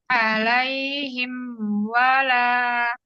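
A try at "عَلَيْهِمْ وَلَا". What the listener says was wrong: Alaihim wala, jangan terlalu lama ditekannya. Alaihim, tidak. Alaihim wala, sempurnakan sukun mim saja, kemudian langsung ke harful waw, huruf waw. Alaihim wala.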